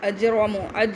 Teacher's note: جیم قلقلہ کرنا یعنی پکڑ کر چھوڑنا